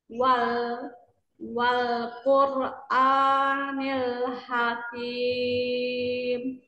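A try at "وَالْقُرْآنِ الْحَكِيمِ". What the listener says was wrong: Quranil a-nya dua harokat saja. Nil hakim, nil.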